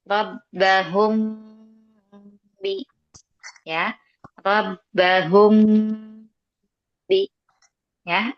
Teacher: Nah, jadi mim sukunnya itu dia samarkan ya. Ikhfa syafawi menyamarkan mim sukunnya. Kemudian disertai dengan gunnah ya. Jadi dia ada gunnahnya. · Cara bacanya itu dengan cara menyamarkan mim sukunnya.